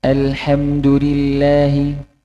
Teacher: Di Yaman kebanyakan membacanya agak miring ketika harokat fathah.